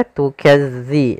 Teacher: Hati-hati dalam melafalkan za, jangan dibaca dengan zai karena nanti merubah maknanya. Tukazzi, za makhrajnya agar sempurna kita lafalkan dari ujung lidah kita menempel dengan gigi sari atas.